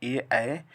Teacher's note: छठा नंबर है ये दे तो कंठ तालु, यानी ए ए का उच्चारण स्थान कंठ और तालु दोनों होगा।